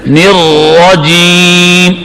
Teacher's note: را کو موٹا پڑھو, زبان کی یہ پشت اوپر کے مسوڑوں سے لگ جائے